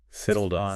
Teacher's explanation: You link the D in settled to the O in on.